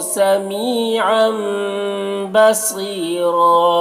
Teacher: और यहाँ पर तनवीन के बाद बा है तो तनवीन को मीम से बदल कर गुन्ना इख्फा के साथ में पढ़ेंगे, इसी का लाभ कहते हैं।